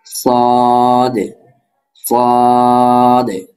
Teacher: জিহ্বার আগা সামনের নিচের দুই দাঁতের আগার সাথে লাগিয়ে সদ, সিন, ঝা উচ্চারিত হয়। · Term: 12 নম্বর মাখরাজ